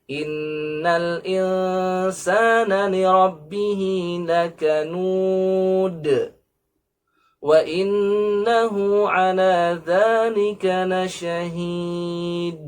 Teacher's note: 3 ayat ini diakhiri semuanya dengan huruf dal. Maka seharusnya dibaca dengan qalqalah. Maka kesalahan yang terjadi di masyarakat ketika membaca dalnya tanpa qalqalah, maka seolah huruf itu atau kata tersebut diakhiri dengan huruf ta.